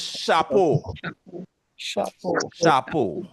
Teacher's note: So the CH sound in Patwa gives you the sound sh.